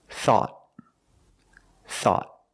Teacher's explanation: At the end, the tongue goes up and makes a stop T.